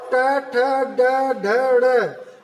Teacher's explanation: ट ठ ड ढ ड़, इसको बोलने में आपकी जीभ मूर्धा से टच हो रही है, मतलब वायु वहां से आ रही है।